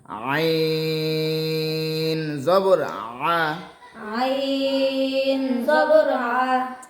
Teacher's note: আইন উচ্চারণের সময় একটু গলা চেপে উচ্চারণ করতে হবে।